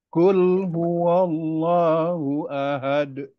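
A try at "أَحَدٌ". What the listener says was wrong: D-nya kurang kuat. Ahad. Ahad. D-nya lebih kuat.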